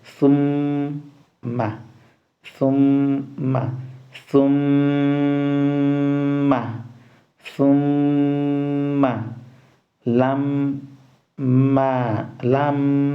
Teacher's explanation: if you pronounce it, you close the lips because that's the point that the Meem letter is coming out from. So the lips is going to be closed, and then you try to pronounce it with the shadda.